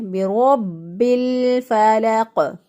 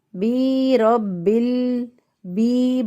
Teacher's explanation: برب الفلق، بعض لوگ اس کو پڑھتے ہیں بی رب بی، با کے بعد یا بنا دیتے ہیں، یا ڈال دیتے ہیں، تو بھی غلط ہو جائے گا